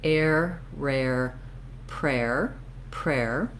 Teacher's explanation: I mostly want to leave my tongue in that R position through that whole time because the R needs, the R is the most strong sound, and so when I have that R and I build around it, it's easier to maintain that nice tight R.